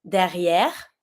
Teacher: But as you know, we're not going to be pronouncing the last E.